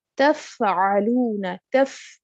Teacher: तो जिस तरह ये वर्ड है तफ़अलून, तफ़अलून, ठीक है, ये दफा है ना, तफ, आपने फा के ऊपर थोड़ी देर लगानी है, इसको तफ़अलून, तफ तेजी से नहीं पढ़ना, ठीक है, तफ़अलून, तफ, जब तफ कहेंगे हम्स की सिफ्त इसमें जाहिर होगी